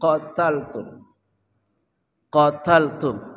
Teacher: qaf ya dari pangkal lidah